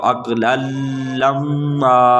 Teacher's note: تو یہاں پر ادغام تو ہو رہا ہے مگر غنہ نہیں ہو رہا، کیونکہ لام اور را دو ایسے حرف ہیں حروف یرملون سے کہ اگر وہ آ جائیں تو ادغام ہوگا بغیر غنہ کے۔